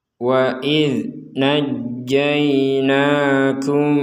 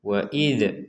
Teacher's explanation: huruf dzal bertanda sukun, maka kita membacanya tidak menggunakan pentalan atau pantulan. Jadi jangan sampai dibaca wa id karena ini huruf dzal, yaitu huruf dal yang ada titik di atasnya, ini huruf dzal.